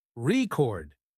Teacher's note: you stress the first syllable AR chord it's a noun but if you stress the second syllable record it's a verb